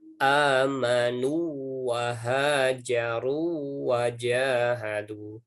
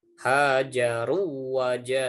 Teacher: wawunya bukan huruf wawu asli tapi wawu madi, ya, wawu mad yang dibacanya panjang, ya. Jadi ada domah diikuti wawu.